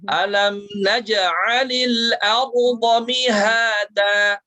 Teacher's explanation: Nah, pastikan pangkal lidahnya itu terangkat ya. Kemudian mad iwadnya jangan terlalu panjang, satu ayunan saja ya